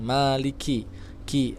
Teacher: Ingat huruf kaf harus ada aliran udara yang keluar sedikit, ya, tapi tidak berlebihan.